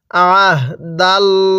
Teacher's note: এই লামটাকে মোটা করে পড়ব, কারণ আল্লাহ শব্দের এই লামের পূর্বে যখন জবর দেখব তখন লামটা মোটা করে পড়তে হবে